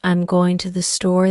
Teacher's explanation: the emphasis falls on going and store not I'm or to